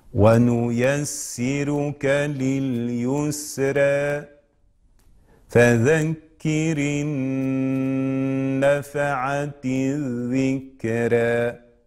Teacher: كلمة الذكرى الراء قرأت بماذا؟ بالترقيق. ما سبب ترقيقها؟ الألف الممال الواقع بعدها